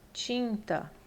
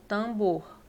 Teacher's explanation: Esse N, ele vai nasalizar o I, tá? Então, ele não vai formar aqui, ó, encontro consonantal com o T, não. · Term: dígrafo vocálico